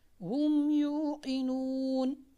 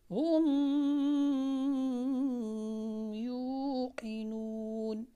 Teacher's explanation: میم کو ہم نے ظاہر کر کے پڑھنا ہے، واضح کر کے پڑھنا ہے، بغیر غنہ کے پڑھنا ہے۔ ہم یوقنون، ہم یوقنون، دیکھیں میں میم کو بالکل واضح کر کے پڑھ رہا ہوں، ہم یوقنون، ایسے نہیں پڑھنا، ہم یوقنون، نہیں، یہاں پر یہ جو غنہ ہے بنتا نہیں ہے، یہ قواعد تجوید کے اعتبار سے غلط ہے۔